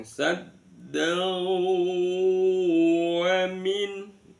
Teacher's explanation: Kemudian sabda ada fathatain bertemu dengan wau. Maka bunyi fathatainnya dimasukkan ke dalam wau disertai dengan mendengung.